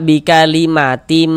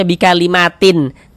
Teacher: Karena di sini yang kita temui tanwin, maka tanwin dimasukkan ke huruf mim ini, melebur ke huruf mim ini. Sehingga ini kita baca bikalimatim. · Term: idgham bighunah, idgham bi gunnah